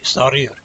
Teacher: You roll the R like the Spanish, the same way.